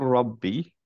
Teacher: দুইটা লাম আর র ইদগাম হয়েছে